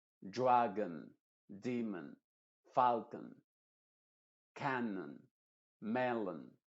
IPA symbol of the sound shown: ə